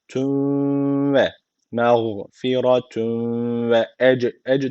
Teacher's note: derken bakın cim harfi cezim almış cim harfi kalkale harflerinden birisiydi cezim aldığı için burada kalkale var ne yapıyoruz hafif bir vurguluyoruz